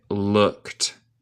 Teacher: vamos a pronunciar como no hay E y el D es un T